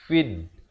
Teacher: Alif lam syamsiah di sini. Lamnya tidak dibunyikan. Jangan baca fil tapi fid.